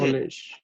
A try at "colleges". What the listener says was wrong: Add the extra syllable. It's plural.